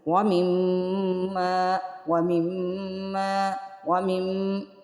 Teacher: میم مشدد پہ یہاں پہ دیکھیے میم پہ شاد ہے، تو یہاں پہ ہم غنہ کریں گے، وَمِمَّ وَمِمَّ وَمِمَّ میم میم، ناک جو ہے آواز جو ہے وہ ناک کے بانسے سے ادا ہوگی، وَمِمَّ 1 الف کے برابر اس کو یعنی کہ کھینچنا ہے، وَمِمَّ وَمِمَّ، یہاں پہ جو غنہ ہو رہا ہے نا اس کو کہیں گے غنہ زمانی، ٹھیک ہے۔ · یہاں پہ آپ نے ایک چیز غور کی ہے، جب ہم نے میم کو پڑھا ہے نا، میم کو میم سے ملایا ہے، وَمِمَّ وَمِمَّ، دونوں ہونٹوں کو جوڑ کے رکھا ہے، یعنی ہونٹوں کو ہم نے کھولا نہیں ہے، دونوں ہونٹ ہمارے جو ہے آپس میں مل رہے ہیں